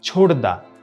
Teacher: সন্ধিতে ঘোষ ধ্বনির পূর্ববর্তী ধ্বনিটাও ঘোষ হয়ে যাবে